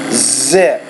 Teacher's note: producing that alveolar consonant with a little bit more vibration.